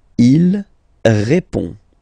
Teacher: final D is not pronounced.